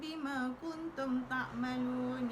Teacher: Mim mati bertemu dengan ba, ikhfa syafawi, tidak boleh dibaca, rapatkan bibir.